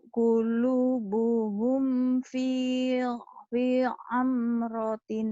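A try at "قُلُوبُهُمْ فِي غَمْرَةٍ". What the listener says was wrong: Ada titiknya jadi gom. Gom protein.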